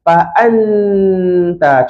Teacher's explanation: Betul tak kalau saya sebut dengung ni, masa saya sebut an tu, hujung lidah saya letak dekat belakang gigi atas.